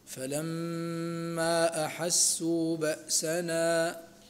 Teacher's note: الميم المشددة فيها غنة بمقدار حركتين، والمد هنا منفصل في فلما أحسوا، ونمده لورش بالإشباع ولحفص ولقالون فيه الوجهان.